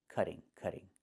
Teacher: in America, we change the T to a fast D when it's between vowels